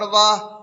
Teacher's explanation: ہا میں قلقلہ نہیں ہوگا کیونکہ ہا پر جزم تو ہے لیکن حروف قلقلہ میں سے نہیں ہے